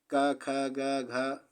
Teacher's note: तो का वर्ग में आ रहा है ये, तो आपका उच्चारण स्थान कंठ होगा।